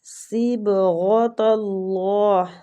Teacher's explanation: صاد بھی پر حروف ہے، با پہ قلقلہ، غین مستعلیہ حروف ہے، اس کو بھی پر پڑھنا ہے۔ طلّہ، اللہ کے لام کو بھی ادھر ہم نے پر پڑھنا ہے۔